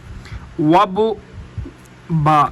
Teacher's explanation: دونوں ہونٹوں کو آپس میں جب ملائیں گے تو یہ با ادا ہوگی۔ با ہونٹوں کے تری والے حصے سے تری والے حصوں کو آپس میں ملائیں گے، با ادا ہوگی۔